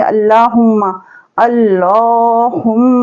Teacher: अल्लाह और अल्लाहुम्मा की लाम से पहले ज़बर और पेश हो तो लाम को मोटा करके पढ़ते हैं और खींचेंगे लाम को एक अलिफ के बराबर खाली।